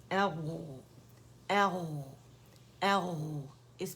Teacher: رخاوہ ہے، آواز جو چل رہی ہے، موٹا لیٹر ہے، ایک مزید موٹا نہیں ہے، صرف اس میں استعالہ ہے.